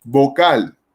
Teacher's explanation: vocal lleva el acento en la última sílaba pero no no lleva tilde porque la palabra vocal termine en